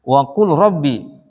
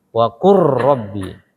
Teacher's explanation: Karena lamnya ngilang, langsung qura, waqur. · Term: idgham kamil